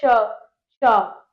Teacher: वे व्यंजन जिनका उच्चारण करते समय वायु रगड़ खाते हुए बाहर निकलती है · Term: ऊष्म व्यंजन